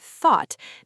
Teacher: When a native English speaker says the word thought, they don't consciously think about pulling their tongue back, raising the back of the tongue, rounding their lips slightly, and producing a soft low vowel sound